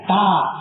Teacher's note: பல் வரிசை மேல் உதட்ட இந்த நாக்கு தொடணும். அப்பதான் தான்னு சொல்ல முடியும்.